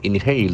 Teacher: the accent falls from the second syllable